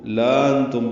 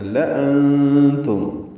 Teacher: لأنتم، اکثر غلطی یہ ہوتی ہے کہ لوگ اس کو لانتم پڑھتے ہیں، بچے لمبا کر دیتے ہیں، تو اس سے اندازہ ہوتا ہے کہ ناظرہ پڑھتے ہوئے کہ توجہ سے نہیں پڑھا گیا۔ لام کو لمبا نہیں کرنا، لأنتم، یعنی انتم کا جو حمزہ ہے وہ لام کے ساتھ جوڑ کے لکھا گیا ہے، جس کی وجہ سے یہ لأنتم بنا ہے، یہ لا انتم نہیں ہے، لام کو لمبا نہیں کر سکتے۔